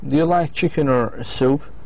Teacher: the speaker's voice goes up on the first one and down the second one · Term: either or question